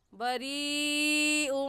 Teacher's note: اس مد کو ہم 4 الف کے برابر کھینچ کر پڑھیں گے، نہ اس سے کم اور نہ ہی اس سے زیادہ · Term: مد متصل